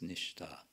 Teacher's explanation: it becomes retroflex from nis to nish because of internal sandhi